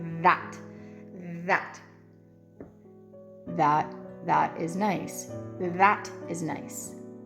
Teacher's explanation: with an Irish accent you're bringing your tongue up a little bit over your teeth a little bit longer